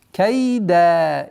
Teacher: При остановке аннулируется танвин и уходит в размере двух огласовок долготы